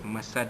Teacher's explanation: Hablum mim masad, bila kita wakafkan jadilah dia masad, ya, qalqalah kubra, lantunannya kuat